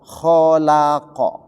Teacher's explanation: kho itu tebal, la tipis, qaf tebal, jadi tebal tipis tebal